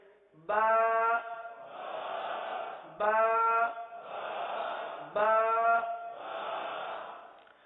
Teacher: با ہونٹوں کے، دونوں ہونٹوں کے تر حصے سے ادا ہوتا ہے